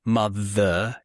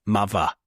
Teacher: it's mother with a v kind of sound. It's not What's the other I think of an example for the other one.